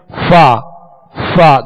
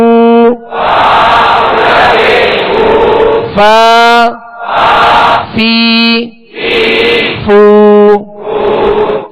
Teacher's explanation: اس کا صحیح جو مخرج ہے وہ ہے کہ اوپر کے سامنے والے دو دانتوں کے کنارے اور نچلے ہونٹ کا تر حصہ